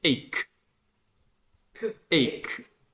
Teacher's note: You don't pronounce it like CH, just like K.